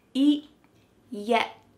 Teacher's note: My tongue is stopped at the top of my mouth and I'm not letting that air pass through.